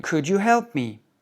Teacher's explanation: si tu prononces pas le L, tu auras l'air plus naturel